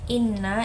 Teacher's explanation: Inna ini dibaca ghunah karena dia nunnya bertasydid